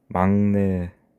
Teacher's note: 막내라고 발음이 되는데 니은으로 인해 기역이 비음화가 되는 것입니다. 그래서 축약되지 않고 교체만 되는 것입니다.